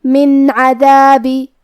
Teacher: حرف العین کی ادائیگی حلق کے درمیان والے حصے سے ہے. دال کو ہم زبان کے سر اور اوپر والے دانتوں کے اندرونی کناروں سے ادا کریں گے. · عین حروف الاظہار میں سے ہے تو ہم یہ نون ساکن ظاہر کریں گے اور بغیر غنہ سے یہ حکم کو ادا کریں گے